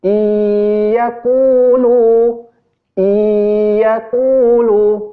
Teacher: Ya, nun sukun bertemu dengan ya. Pertama, dileburkan bacaan nun sukunnya ke huruf ya. Yang kedua, didengungkan karena itu idgham bi gunnah. Iyaqulu, maksud dengung itu cara mudah membaca dengung adalah ditahan.